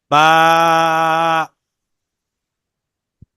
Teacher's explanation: দুই ঠোঁটের ভিজা জায়গা হইতে বা উচ্চারিত হয় তা আমাদের দুই ঠোঁটের যে ভিজা অংশটা আছে ভিতরের সেই দুইটা